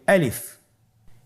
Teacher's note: আলিফ হরফটি মাখরাজ হলো আপনার মুখের শূন্যস্থান থেকে গলা এবং মুখের শূন্যস্থান হতে আলিফ হরফটি উচ্চারিত হয়।